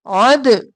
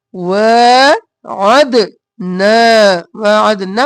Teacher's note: عد گلے کے درمیان سے عین اور دال قلقلہ. وعدنا وعدنا موسیٰ نہیں کرنا، نا کرنا ہے، الف مدہ ہے.